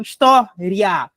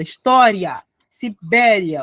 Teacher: Porque tá vendo aqui que tem aqui, ó, um encontrinho aqui vocálico de uma semivogal com uma vogal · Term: proporoxina falsa